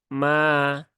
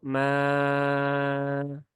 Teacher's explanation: Alif setelah Fathah di atas huruf mim ya berarti dia dibaca Dua harakat ya mad asli ya Mad thi'i maka Cukup dua harakat saja · Cukup dua harakat saja jangan panjang-panjang